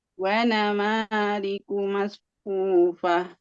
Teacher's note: Nah, nanya jangan panjang. Ma-nya yang panjang.